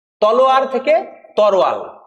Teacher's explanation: দেখো দুটো ধ্বনি র আর ল পরস্পর উল্টাপাল্টা হয়েছে। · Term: ধ্বনি বিপর্যয়